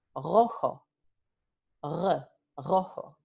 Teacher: Tenemos en Puerto Rico un alófono que es velar o uvular. Dependiendo de los hablantes, este alófono puede ocurrir en diferentes partes del aparato fonador. · Dependiendo de los hablantes, este alófono puede ocurrir en diferentes partes del aparato fonador. Algunos hablantes, para ellos es un sonido velar, para otros hablantes es más abajo en la garganta, un sonido uvular. Y esta vibrante se pronuncia r. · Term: vibrante múltiple